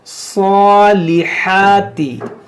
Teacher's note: वामिलुस सॉलिहाती, यहाँ पर देखें स्वाद हुरूफ मुश्तालिया है और स्वाद पर खड़ा ज़बर है, तो इसको मोटा भी करेंगे और एक अलिफ के बराबर खींचेंगे, सॉलिहाती। और यहाँ हा है, 2 हा पढ़ा होगा आपने, एक हा और एक हा, तो ये हा है, यानी बीचों बीच हल्क से ये अदा होता है, सॉलिहाती सॉलिहाती।